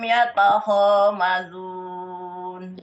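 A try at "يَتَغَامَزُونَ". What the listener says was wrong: Yatagom, bukan yatakho, yatagom.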